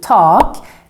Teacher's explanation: with a long A in tak because there's just one consonant coming after the A.